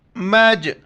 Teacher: میم پر چونکہ شد ہے یہاں پر غنہ ہو کے جیم کے ساتھ ملائیں گے اور جیم کے اوپر کلکلہ کریں گے